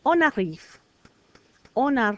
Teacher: before a consonant silent n but before a vowel now I hear it